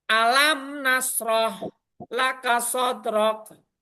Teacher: Jadi baca mimnya itu jelas, mati, nunnya juga jelas, enggak ada samar-samar dengan dengung. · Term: Izar Safawi